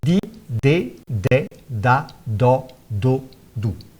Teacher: a consoante oclusiva dental sonora